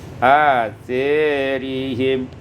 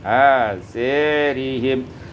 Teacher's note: imalatu fathatis sa wal alif, diimalahkan fathah sa dan alif menjadi asarihim